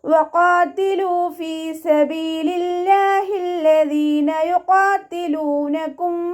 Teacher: ലാമിന് ശബ്ദ വന്നു, 2 അക്ഷരങ്ങൾ ഉച്ചരിക്കുന്ന കനം കൊടുക്കണം